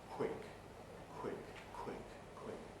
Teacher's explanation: In the case of tune, the aspiration happens during the yod, tune, tune, which of course is why it's easy for it then to become tune in some people's speech. In the case of quick, the aspiration happens during the W sound.